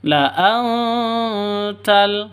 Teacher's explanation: nun mati bertemu dengan ta. Samar didengungkan, siap-siap ke huruf taknya karena bacaan ikhfa hakiki.